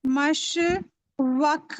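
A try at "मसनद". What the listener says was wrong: नहीं, नून है ना वहाँ। नहीं तो नून डबल पढ़ा जाएगा, तजदीद है।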